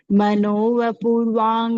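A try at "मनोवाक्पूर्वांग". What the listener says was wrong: वांग कहाँ है? वांग तो नहीं है। वाग है।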